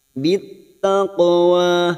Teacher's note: Qaf sukun qalqalah sugro yang mati asli di tengah kalimat jangan lupa dipantulkan